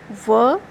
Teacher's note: व का उच्चारण स्थान है व, जो कि दंतोष्ठ से बोला जाता है